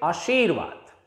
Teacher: देखिए, अगर हम बात करें हिंदी की, तो हिंदी में इस शब्द को हम बोलेंगे आशीर्वाद। यहां पर श के बाद लगने वाली ई की मात्रा को हम लंबा करके बोलेंगे, क्योंकि यहां लंबी ई की मात्रा लगी हुई है।